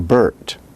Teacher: bert phonetically would be written as b r t there is no vowel in the name bert the r takes the place of a vowel therefore we in linguistics draw a little line under the r · The R takes the place of a vowel. Therefore, we in linguistics draw a little line under the R, and by doing so indicate that it is acting as a vowel.